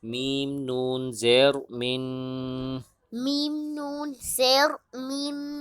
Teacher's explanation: میم کے بعد نون ساکن ہے، نون ساکن پہ غنہ کریں گے۔